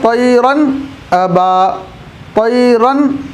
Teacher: گا یا نون ساکن کے بعد آئے گا تو وہاں پر نون کی آواز کو ظاہر کر کے پڑھیں گے، ناک میں نہیں چھپائیں گے۔ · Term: اظہار